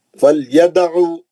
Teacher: فلیدعو دال پہ خلخلہ ہے صغرا